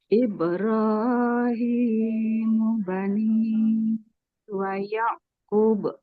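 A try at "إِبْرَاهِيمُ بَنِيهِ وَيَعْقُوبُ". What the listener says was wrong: Qafnya panjang. Wa Yaqub.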